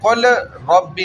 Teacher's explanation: لام اور را, لام اور را یہ قریب المخرج ہے